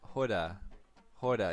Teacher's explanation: You see the p changes to a h there.